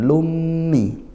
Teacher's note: Lummi, lah ini idgham bi gunnah, dibaca masuk langsung ke huruf mim. Kalau kita dengar seolah tidak ada tanwin, padahal ada tanwin. Lummi, idgham bi gunnah, dan dengung ya, bi gunnah, masuk dengung.